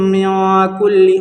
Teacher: نون کے اوپر جزم سے نون ساکن، اور نون ساکن کے بعد حروف اخفاء کے 15 حرفوں میں سے کاف ہے، اس لیے نون کی آواز کو ناک میں چھپا کر پڑھنا چاہیے، جیسے اردو میں پنکھا کے نون کو پڑھتے ہیں، اخفاء کی مقدار 1 الف کے برابر ہے، اس کو اخفاء حقیقی کہتے ہیں۔